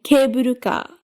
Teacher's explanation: The pattern where the first syllable is high and the other ones are low.